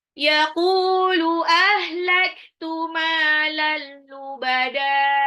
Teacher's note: Lubada, di belakang ini ada mat iwat. Fathah tanwin, apabila diwakafkan, maka dia menjadi mat tabi'i saja, tanpa tanwinnya itu. · ini tanwin ketemu lam, idgham bila guna, langsung dilebur ya, tanpa ditahan.